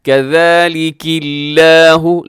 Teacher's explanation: لفظ اللہ کو باریک رکھیے گا کیونکہ اس سے پہلے کاف کے نیچے زیر ہے · زا سیٹی والا ہوتا ہے تو یہاں وہ نہیں ہے بلکہ ذال ہے، اسے نرمی سے آپ نے ادا کرنا ہے